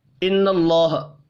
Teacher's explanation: ان اللہ نون مشدد پر غنہ کریں گے. اللہ کا نام زبر کی وجہ سے پر پڑا جائے گا